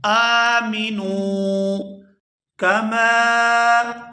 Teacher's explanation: یہاں میم کو الف مدہ کی وجہ سے کھینچ کر ادا کیا جائے گا